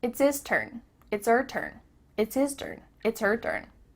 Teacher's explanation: The H at the beginning of his and her is cut off.